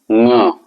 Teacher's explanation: अंग नहीं बोलते, ङ बोलते हैं। नाक और मुख दोनों से उच्चारित होते हैं।